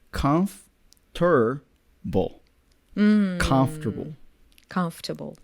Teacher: Yeah, there's an added R sound there.